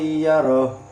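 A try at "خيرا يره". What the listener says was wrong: Nah, kurang ya, kurang lama ya. Khairan yarah. kayak ada dengung sedikit. Bukan cuman khairai, khairai, tapi ada khairai, ada dengung sedikit. Khairan yarah.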